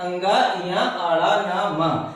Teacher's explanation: अनुनासिक, अंगा या आड़ा ना मा, ये इन ध्वनियों को अनुनासिक कहते हैं। अनुनासिक का मतलब होता है कि इन ध्वनियों का उच्चारण हम नासिका से करते हैं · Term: अनुनासिक ध्वनि